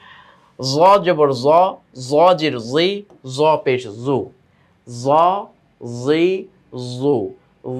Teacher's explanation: জ জবর জ, জ জের জি, জ পেশ জু, জ জি জু, জ জি জু। জিহ্বার আগাটা দাঁতের আগার সঙ্গে গিয়ে লাগবে, তাই না, উপরের দাঁতের আগার সঙ্গে। এটা হচ্ছে জ জাল সায়ের মাখরাজ, 13 নম্বর মাখরাজটা।